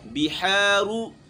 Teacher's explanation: حا کی ادائیگی گلے کے درمیان سے کرنی ہے